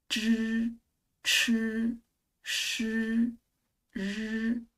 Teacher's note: 知吃诗 and 日 are all retroflex sounds